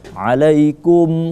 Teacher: dua huruf itu maka dibaca jelas karena dia menjadi syafawi ya maka alaikum di situ tidak kita baca dengung tapi jelas